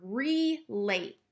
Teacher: I'm hearing that long a sound so it's not making the schwa sound here